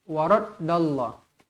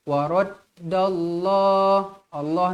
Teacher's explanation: lafzul jalalah dibaca tebal Dal sabdu tekankan dia